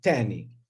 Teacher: more and more speakers merge the interdentals with the dental or alveolar stops. And instead of thani, they say tani, okay?